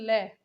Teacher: कौन सा होता है ल ल पार्श्विक व्यंजन है ल का उच्चारण करते समय हमारे सांस जीभ की बगल यानी कि पार्श्व बगल जो रहती है साथ में उससे होकर गुजरती है